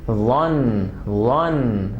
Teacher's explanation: زبان کی نوک کا استعمال کریں گے اس کو بولتے ہوئے. Tip of the tongue will touch the edges of front upper two teeth.